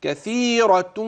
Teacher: معنا حرف الراء يفخم رواية